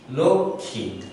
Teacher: একটি অল্প প্রাণ এবং একটি মহাপ্রাণ সৃষ্টি করে নিতে হবে, তাহলে সেজন্য এখানে ক এবং খ এসেছে।